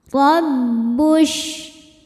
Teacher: Huruf ro dibaca secara tafkhim karena roho berharakat di atas yaitu harakat fathah. Cara membaca ro ini adalah ditebalkan dengan cara mengangkat pangkal lidah kita.